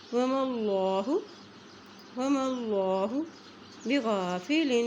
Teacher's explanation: اللہ کے نام سے پہلے زبر آ گیا ہے تو یہاں پر اللہ کا نام موٹا ادا کیا جائے گا